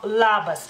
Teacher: En lituano la L tanto puede ser más suave como más firme, por así decirlo, y en la palabra labas es más firme